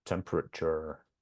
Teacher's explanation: Sometimes when there's an R on the end, we drop the R, British English. · you'll notice that in the unstressed syllables, we have this schwa sound.